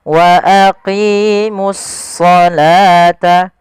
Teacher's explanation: Kemudian pada lafal as-shalah di sini ini langsung di sini ada alif lam syamsiyah, yaitu di sini ada alif lam, kita namakan dengan alif lam syamsiyah, yaitu suaranya kita langsung ke huruf shadnya